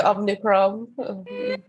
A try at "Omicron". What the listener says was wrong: I keep calling it Omnicron, but it's actually Omicron. There's no N. like Omicron. Omicron. It's not, there's no E on the end and there's no N in Omni.